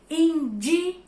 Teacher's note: eu sei que a sílaba tônica é de, indígena. E ela é a antepenúltima. De é a antepenúltima.